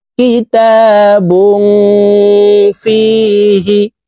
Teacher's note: নাকের ভিতরে লুকাইয়া গুন্ন সহিত পড়বো